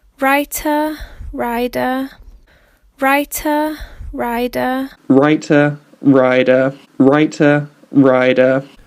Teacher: And you'll notice in RP, you get the nice t in writer, writer, and you get the nice d in rider, rider.